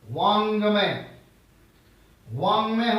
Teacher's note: तो हम देखें, जैसे यहां पर हम देख रहे हैं वाक्धन मैं लिखा है, क के बाद म अनुनासिक है, नाक से उच्चारण हो रहा है, तो अंगा, वांगमय, वांगमय हो गया।